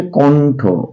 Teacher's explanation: মূর্ধন্যয়ের উচ্চারণ হয় দন্তন্যয়ের মতো।